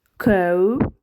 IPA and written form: kaʊ (cow)